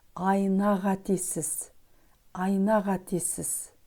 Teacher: В слове қатесіз звук «к» произносится как «г», потому что он идет после гласного звука «а».